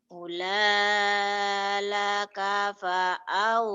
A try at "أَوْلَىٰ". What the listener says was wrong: bukan ula, itu mah patah atuh, bukan ula. Coba dilihat baik-baik. أولى أولى أولى لك فأولى أولى أولى لك فأولى أولى لك فأولى أولى لك فأولى.